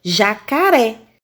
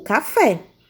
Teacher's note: oxítonas última sílaba da palavra é tônica ou seja forte